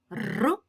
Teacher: р - це приголосний звук адже нам заважає його вимовляти язичок він дрижить